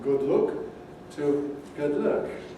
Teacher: if you grow up in the north of England, you probably use the same vowel in both words, and you say something ranging from good look to good luck.